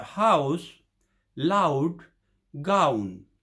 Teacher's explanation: close mid sorry close mid and open mid in tongue height so there is only slight lip rounding · Usually in English, the glide towards ow begins but is not completed, the end of the diphthong being somewhere between close mid and open mid in tongue height. So there is only slight lip rounding.